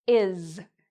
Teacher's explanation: The reason they mispronounce it is because the S here actually sounds like a Z sound. So I'm going to put a little Z here to help you remember this.